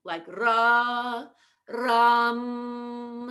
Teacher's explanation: we have to go up in the middle of ram